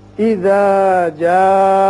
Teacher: اذا جاء اذا ذال کو آپ نرمی سے ادا کریں گے. زبان کی نوک اوپر والے جو سامنے کے دانت ہیں ان کی جڑوں کے ساتھ تھوڑی سی لگے گی تو ذال نرمی سے ادا ہوگی. جاء یہ بڑا مد ہے جسے مد متصل کہتے ہیں، یعنی حرف مد جو ہے وہ ایک ہی کلمے میں آتا ہے.